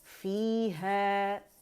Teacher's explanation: جب بھی یا ساکن سے پہلے زیر آئے گی تو آواز 2 کاؤنٹ کے لیے اوپر جائے گی، مد طبیعی بنے گی، مد اصلی بنے گی.